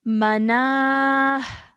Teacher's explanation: stretching the na for 2 seconds and having a h sound at the end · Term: ha sakin